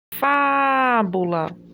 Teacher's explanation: é a penúltima sílaba que é mais forte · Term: sílaba tônica